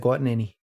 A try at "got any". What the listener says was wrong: Too many syllables.